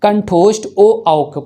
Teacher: कंठ और ओष्ठ का संयुक्त रूप करने पर कंठोष्ठ ओ औ बोला जाता है